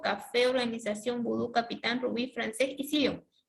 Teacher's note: la mayor fuerza de voz está en la última sílaba, le vamos a colocar tilde a estas palabras. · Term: palabras agudas